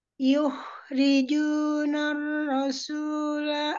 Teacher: Yukhriju dialirkan tapi tidak pantul.